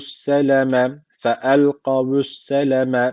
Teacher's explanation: Şedel nun var. Mutlaka bir elif miktar tutmamız gerekiyor. Künne boğazdan.